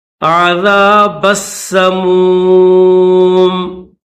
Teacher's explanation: یہ جو با ہے اس با کو سین کے ساتھ ملائیں گے، با سین زبر بس، سین زبر س، بس میم واو پیش مو، یہ سین کے بعد میم ہے، سمو میم زیر می، سمومی، لیکن یہاں پر اسٹاپ کریں گے تو میم کے نیچے زیر نہیں پڑیں گے بلکہ اس کو جزم کے ساتھ پڑھیں گے